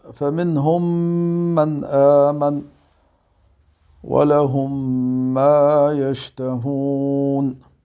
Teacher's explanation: الثاني هو الإدغام الشفوي. إذا تدغم الميم الساكنة في الميم المتحركة، ويسمى إدغاما شفويا، وسمي شفويا لصدوره من الشفتين لكون مخرج الميم شفويا.